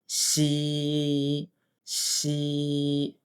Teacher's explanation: 发出声音的瞬间，要用力把一股气吐出来。七、七。我们加上其他的声母一起练习。七、屈、切。最后一个发音是西，发西的时候， 舌面不用完全贴紧上颚，然后发音的时候要让气流不断的从那个缝隙里面吐出来，会听到轻微的丝丝摩擦声